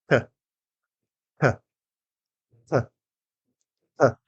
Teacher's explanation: What's happening is your mouth is going through a three-phase process. First, your tongue goes up to your gum ridge above your teeth and stops the airflow. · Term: t sound